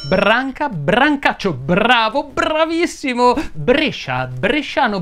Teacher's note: cioè la sequenza b r più vocale Sono molto simili Perché l'unica differenza tra la p e la b è che nella B si utilizzano le corde vocali